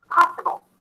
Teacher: in the word possible, the stress falls on the first syllable.